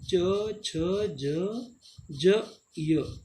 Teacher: ये कहाँ से निकलते हैं? तालु, इसको तालवा या तालव्य भी बोलते हैं, जो जीभ ऊपर से टकराती है।